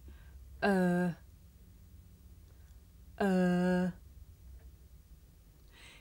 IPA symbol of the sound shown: ɜː